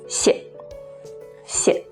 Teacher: When put together to say thank you, the first 谢 is the original fourth falling tone, sharp and short, 谢, 谢. And the second one changes to the neutral tone, which is light without any stress and with no mark on the pinyin, 谢, 谢.